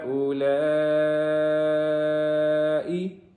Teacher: ہا کے اوپر چھوٹی مد ہے جس کی وجہ سے اس کو 1 سے 3 گنا لمبا کریں گے